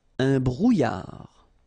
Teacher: Final D not pronounced